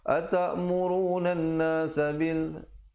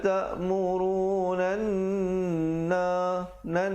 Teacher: Dia kena baca ta'murunan nan, didengungkan di situ 2 harakat, baru masuk nasabil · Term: Wajib al-ghannah